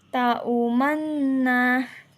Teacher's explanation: Yang kedua, isman adalah mencampurkan dhammah pada sukun dengan bibir monyong di tengah-tengah dengong.